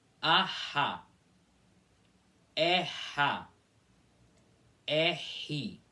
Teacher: no meio de cada uma dessas duas vogais aparece essa aspiração, que na verdade é só com a boca aberta, sem movimentar a língua e fazendo uma aspiração assim.